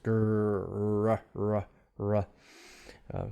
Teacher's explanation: air is kind of gliding over the tongue the tongue tip is not touching anything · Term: glide sound